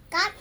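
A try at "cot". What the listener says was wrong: Hindi O yan, di ba?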